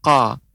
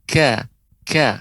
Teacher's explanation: pengucapan huruf Kaf itu harus ditampakkan mengalirnya udara